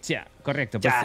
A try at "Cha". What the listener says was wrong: No, Cha no, con él al final, Cha.